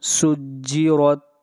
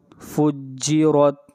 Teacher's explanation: را کو موٹا پڑھیں گے اس لیے کہ را کے اوپر زبر ہے۔